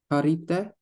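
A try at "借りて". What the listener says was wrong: Perfect. Karite from kariru.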